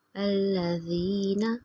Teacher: زینہ پہ تھوڑا زور دیں گے، یا کی مثال حروف مدہ ہے، 1 فنگر کے برابر لمبا کریں گے